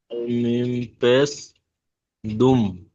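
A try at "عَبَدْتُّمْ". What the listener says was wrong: দুম নয়, তুম। তামিম পেশ তুম। তুম গুন্না হবে না, তুম। আবাদ তুম।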